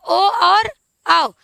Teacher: कंठ ओष से बोले जाने वाले वर्ण कौन से हैं तो ओ और औ ये कहां से बोले जाते हैं कंठ से भी और ओष से भी